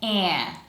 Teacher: So instead of sounding like a, it sounds more like eh. And that's because it comes before a nasal consonant, in this case n. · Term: nasalized